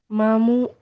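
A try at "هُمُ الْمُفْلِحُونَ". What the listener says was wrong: হোমল। না, এটা হা, প্রথমটা হা তারপর মিম। হোমল মুফলিহুন।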